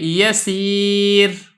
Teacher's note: را ساکن ما قبل یا ساکن ہو تو ایسی صورت میں بھی را باریک ہوگی. جیسا کہ یسیر، اب یہ دیکھیں یا ساکن ہے، را بھی ساکن ہے، یا بھی ساکن ہے، تو را کو باریک کر رہے ہیں.